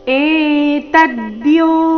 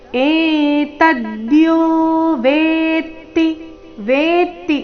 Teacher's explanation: ಮೇಲೆ ಆಘಾತ ಕ್ಷೇತ್ರ ಮಿತ್ಯ ಧೀಯತೆ [ಸಂಗೀತ] ಧೀಯತೆ ಧಿ ದೀರ್ಘ ಕೊನೆಯತೆ ದೀರ್ಘ ಏತದ್ಯೋ ತ ಮೇಲೆ ಆಘಾತ